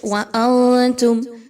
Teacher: نون ساکن کے بعد تا کا حرف ہے اس لیے یہاں پر اخفا کیا جائے گا۔ میم ساکن کے بعد تا کا حرف آ رہا ہے تو یہاں پر اظہار شفوی کیا جائے گا، کسی طرح کا غنہ میم پر نہیں ہوگا۔